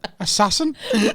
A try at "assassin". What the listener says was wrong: You pronounce every syllable as its own word.